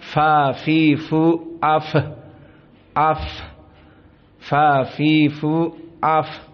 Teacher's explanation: kita baca jumhur dari qirah haf dan yang lainnya kita ulang Fa di sini di saat disukunkan maka dia dalam keadaan hams · Perhatian, fa di sini di saat disukunkan maka dia dalam keadaan hams pula. Karena fa termasuk dari fahasahu.